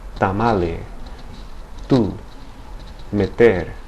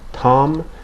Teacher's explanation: the release of air is more subtle than in English. So instead of Tom, it's tamale. · The T in Spanish varies slightly from the T in the English pronunciation of the name Tom, in that in Spanish the tongue is lowered and makes contact against the back of the upper teeth. As with the B and P sounds, the release of air is more subtle than in English.